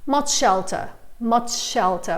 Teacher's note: as well we tend to pronounce the sound just once so much shelter just merges into one sound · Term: one sh sound